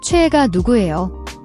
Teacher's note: The cho has a distinct CHW sound, combining CH and OE. The is often pronounced like we in English way.